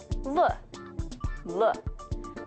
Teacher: This English sound is pronounced laterally, which means that instead of having your breath pass down the center of your mouth, it passes around the sides of an obstruction set up in the center. This obstruction, as you can guess, is your tongue.